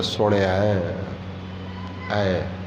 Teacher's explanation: ਜਿੱਥੇ ਨਾਣੇ ਨੂੰ ਸਿਹਾਰੀ ਲੱਗ ਗਈ ਉਹ ਹੈ ਸੁਣ, ਉਹਦੇ ਨਾਲ ਲੱਗੇ ਸੁਣਿਆ ਐ। ਐ ਦੀ ਆਵਾਜ਼ ਆਵੇ, ਏ ਦੀ ਆਵਾਜ਼ ਤੇ ਈ ਦੀ ਆਵਾਜ਼ ਨਾ ਆਵੇ